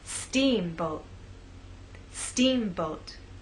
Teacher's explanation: making the first part of the word louder, longer, and at a higher pitch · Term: stressed part